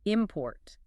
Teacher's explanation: For the verb, try putting a little more punch on that second syllable.